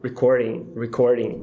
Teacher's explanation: É quando você bate o T ou D tão rápido nos alvéolos que ele acaba virando um açoite. Então, ele vira rareriroru. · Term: flap